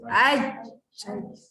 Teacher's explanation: Anda akan rasa tengah-tengah lidah tu sebenarnya naik ke atas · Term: huruf jim